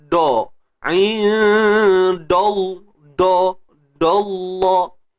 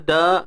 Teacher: Kekalkan sebutan dal seperti biasa, da, kemudian baru tebalkan kalimah Allah.